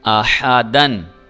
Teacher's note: اب دیکھیں یہ دال دو زبر الف، الف کی جو ہے وہ آحدا ہونا چاہیے تھا، لیکن جیسے کہ میں نے بتایا ہے کہ الف اگر آ جائے تو الف کی آواز حذف کر دی جاتی ہے، دن کی آواز آتی ہے